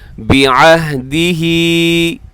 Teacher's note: बिअहदिही खड़ी ज़ेर है, हा के नीचे से खींचना है आपने, बिअहदिही इतना लंबा कीजिएगा।